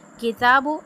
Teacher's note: अब ता पे खड़ी ज़बर है, इसको जो हम एक अलिफ यानी 2 हरकत के बराबर खींचेंगे